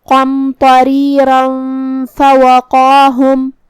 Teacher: اگر ہم یہ آیت کو اگلی آیت کے ساتھ ملا کے پڑھے تو جو کہ حرف الفا کلمت فوقاہم میں حروف الاخفاء میں سے ہے تو ہمیں یہ تنوین کو چھپاتے ہوئے اور غنہ کے ساتھ یہ حکم کو ادا کرنا ہے